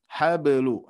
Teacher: Nah, ba pun juga di sini di tengah-tengah ada ba sukun, kita harus pantulkan